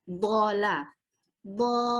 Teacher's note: untuk la ini tidak termasuk ke huruf yang tebal. Jadi kita ucapkannya ringan-ringan aja.